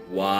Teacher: when ba is preceded by the prefix da okay it loses the BA sound and then it gets a wah sound